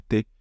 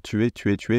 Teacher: dévoilement mais vous voyez que l'idée c'est la même c'est qu' on a enlevé la voyelle au milieu pour faciliter la prononciation